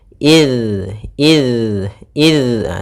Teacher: usahakan jangan sampai memantul huruf dalalnya